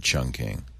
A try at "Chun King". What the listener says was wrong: Oh, but it's Chun King, not Chung. It's Chun King.